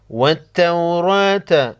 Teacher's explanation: را پر زبر ہے، کڑا زبر، 1 الف کے مقدار کھینچ کر پڑھیں گے اور موٹا پڑھیں گے